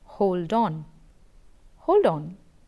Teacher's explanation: the word ending d and the word beginning o of the words hold and on respectively are not very clear when you are saying hold on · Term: linking